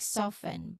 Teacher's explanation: Well, the word is spelled with FT, and the full pronunciation includes the T in everyday relaxed conversations. Many speakers will omit the T sound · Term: very common reduction